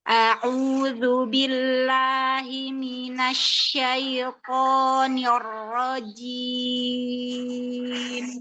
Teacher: 'Jim' seharusnya hanya bersentuhan. Jangan ditekan.